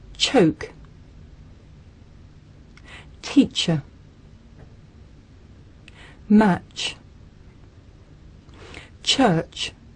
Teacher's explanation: Ban đầu là các bạn sẽ phát âm t và sẽ kết thúc ở âm sh. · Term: âm ch